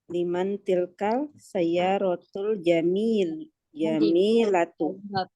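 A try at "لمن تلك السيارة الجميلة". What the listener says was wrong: Sinnya alif lam syamsiyah dibaca, sinnya lamnya tidak dibaca.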